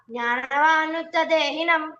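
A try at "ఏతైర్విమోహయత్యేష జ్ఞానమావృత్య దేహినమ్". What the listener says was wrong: జ్ఞాన మావృత్య అక్కడఏదో క్లప్ చేసేస్తున్నావు క్లారిటీ లేదు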